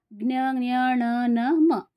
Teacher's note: ಮೂಗಿನ ಸಹಾಯದಿಂದ ಉಚ್ಚಾರ ಮಾಡುವಂತಹ ಅಕ್ಷರಗಳಿಗೆ ಅನುನಾಸಿಕ ಅಕ್ಷರಗಳು ಅಂತ ಹೇಳ್ತಾರೆ